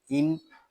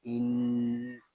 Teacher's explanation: یہاں نون مشدد ہے اور اس کو غننے کے ساتھ ادا کریں گے کیونکہ نون مشدد میں ہمیشہ غنہ ہوتا ہے۔ اس کو ان اس طرح نہیں پڑھیں گے، اس کو پڑھیں گے ان۔